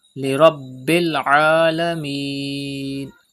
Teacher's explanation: Pronounce ba with emphasis and stretch madde aris at the end.